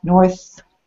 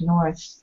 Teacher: stick out that tongue north to get that unvoiced th